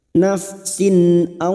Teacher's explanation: naf fathah bertemu ya sukun Huruf layin kita lunakkan bhoiri nafsin kasr tanwin bertemu Hamzah Idhar halq dibaca jelas tanpa mendengung